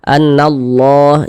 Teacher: domah maka lafaz Allah dibaca tebal baca tkhim lam jalalahnya nih lam yang di tengahnya nih lam jalalahnya ini kita baca tebal